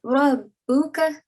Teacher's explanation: the letter ra is carrying a fatha, you have to pronounce it in a thick sound